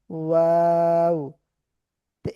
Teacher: দুই ঠুট হতে ওয়াওটা উচ্চারণ হয়। কিন্তু মুখের মধ্যে দুই ঠোঁটের মাঝে একটু ফাঁকা জায়গা থাকে বা খালি জায়গা থাকে।